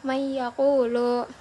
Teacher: pada huruf ya terdapat tasydid yang berfungsi untuk mendengungkan huruf dari nun bertemu dengan ya. Jadi didengungkan gitu, may yaqulu. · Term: idgham bi gunnah